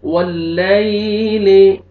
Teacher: या साकिन से पहले ज़बर है, नरमी से अदा करेंगे। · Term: यालीन